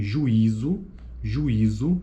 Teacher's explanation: sequência de vogais em sílabas distintas